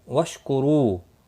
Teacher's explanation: رو واو مدہ ہے، ایک الف کے برابر کھینچ کر پڑھیں گے. را پیش کی وجہ سے پر پڑھا جائے گا.